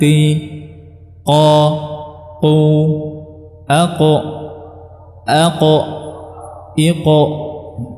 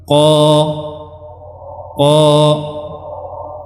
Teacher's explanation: Dia juga termasuk huruf-huruf yang tebal, ya, karena pangkal lidahnya dia meninggi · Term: huruf qaf